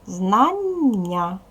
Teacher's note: знання наголос падає на другий склад